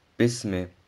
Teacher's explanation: Beim Aussprechen des Ba und des Mim öffnet sich der Mund und der Ton neigt sich zum Buchstaben I. Die beiden Buchstaben werden nicht gedehnt und sie sollten nicht wie Bi und Mi ausgesprochen werden.